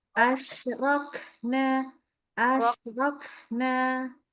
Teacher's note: Omong-omong kafnya keluar udara dong.